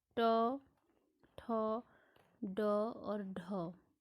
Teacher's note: मूर्धा में आ जाएंगे ट, ठ, ड और ढ